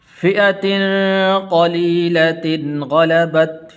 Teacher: غنہ نہیں کریں گے اس لیے کہ آگے غین حروف حلقی میں سے ہے